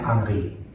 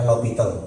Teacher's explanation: Ejaannya memang L'Hospital, ya, tapi ini nama matematikawan Prancis. Kalau di Prancis itu biasanya huruf H di depan itu tidak dibaca, ya, seperti Thierry Henry, ya, tetap tertulis Henry tapi dibacanya Henry.